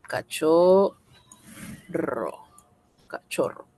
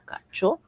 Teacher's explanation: ¿Dónde está la mayor fuerza de voz en cachorro? En la primera O. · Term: Acento